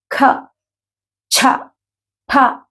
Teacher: వీటిని మహాప్రాణాక్షరాలు అని ఎందుకన్నారంటే, ప్రాణము అంటే శ్వాసతో కూడుకున్నది, బ్రీత్, గాలిని బలంగా బయటికి వదిలేస్తూ పలికే అక్షరాలు అనమాట. ఉదాహరణకి ఖ, ఛ, ఫ ఇలాంటి అక్షరాలు ఏవి పలికినా కూడా గాలి బయటికి బలంగా వస్తుంది. అంటే ఇలాంటి మహాప్రాణాక్షరాలు పలికేటప్పుడు ఎదురుగా కొవ్వొత్తి ఉన్న, వెలుగుతున్న కొవ్వొత్తి అయినా కూడా కొండెక్కాలి అని చెప్తారు.